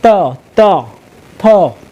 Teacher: दंत यानी कि जो हम जो वर्णों का उच्चारण करते हैं जीभ हमारा दांतों में लगता है · इसका उच्चारण करते हैं तो जीभ जो होता है दंत में लगता है, दांत में लगता है। इसलिए इसको दंत बोला जाता है।